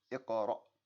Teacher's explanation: Again, there's that hamza at the end, that sharp stop.